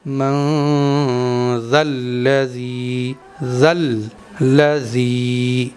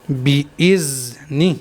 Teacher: ذال کو جب بھی پڑھنا چاہیے نرمی کے ساتھ پڑھنا چاہیے، بہت سافٹ کر کے پڑھنا چاہیے، اور زبان کی نوک کو تھوڑا سا دانتوں سے باہر نکال کے ذال کو ادا کرنا چاہیے۔